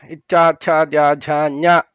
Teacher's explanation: ಈ ಮೇಲ್ಗಡೆ ಹಲ್ಲು ಇದೆಯಲ್ಲ ಅದರ ಹಿಂಭಾಗದಿಂದ ಸ್ವಲ್ಪ ಮೇಲೆ ಒಂದು ಡುಬ್ಬ ತರ ಇದೆ ಅಲ್ಲಿ ನಾಲಿಗೆಯಿಂದ ಹಿಂಗೆ ಮುಟ್ಟು ನೋಡಿಕೊಂಡಾಗ ಮೇಲೆ ಗೊತ್ತಾಗುತ್ತೆ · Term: ತಾಲವ್ಯಗಳು